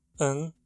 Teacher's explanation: A pronúncia é como um schwa, /ə/, seguido de um N, /n/. Ou muitas vezes é tão reduzido que se consegue escutar apenas o som do N.